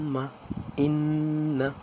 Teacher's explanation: নাকের বাঁশি হইতে গুন্নাহ উচ্চারিত হয়